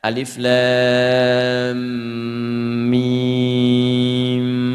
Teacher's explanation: Alif lam mim mewakili makharijil huruf dari bawah ini ya. Adnal halaq di sini ada a dengan ha. A enggak ada sekatnya. Kemudian terus sampai dengan ke lam ke lidah sampai ke bibir mim.